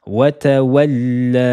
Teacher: Premier doublement de la lettre Lam, elle est prononcée de façon sukoun, et le deuxième avec la fatha, le son E. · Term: dédoublement de la lettre Lam